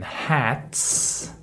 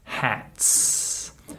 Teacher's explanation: the final s is voiceless there's no vibration